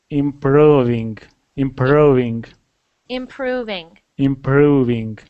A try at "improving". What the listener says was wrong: that one was perfect so keep practicing that one